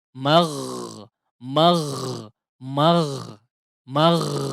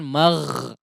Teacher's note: huruf ghain punya sifat rakhawah ya, yang artinya mengalir udara. Mengalir udara atau suara ketika pengucapan huruf tersebut ya.